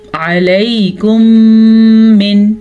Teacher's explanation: میم ساکن کے بعد دوبارہ میم متحرک آ جائے تو دونوں میموں کو آپس میں غنے کے ساتھ ملا کے پڑھتے ہیں۔ اس قاعدے کو ادغام شفوی کہتے ہیں۔